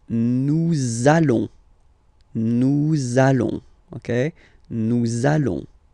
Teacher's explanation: you want to make this beautiful and little liaison, so this little link between the words, so it does mean that you will have to pronounce this z sound